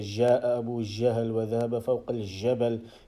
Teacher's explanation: many Arabs, they actually use jim and they say gim, they say ga sound.